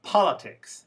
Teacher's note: the word politics has stress on the first one not the second one